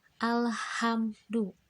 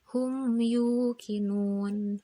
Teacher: Mimna dibaca jelas jeung henteu ngadengung. Di surat Al-Fatihah ayat kedua alhamdu nyaeta mim paeh mayunan salah sahiji huruf idhar safawi nyaeta huruf dal. · Selanjutnya nyaeta cara maca jeung contoh idhar safawi. Cara maca idhar safawi nyaeta mimna dibaca jelas jeung henteu berdengung.